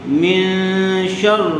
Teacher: گننے کے ساتھ اخفا ہوگا